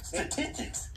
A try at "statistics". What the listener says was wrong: Statistics. You said statistics. You took all the S's out there. Statistics.